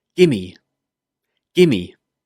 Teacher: Well, gimme is a contraction of give me. Simply, we remove the v sound in give and join the 2 words together.